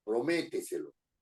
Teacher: es una palabra sobreesdrújula porque tiene la mayor fuerza de voz en anterior al antepenúltimo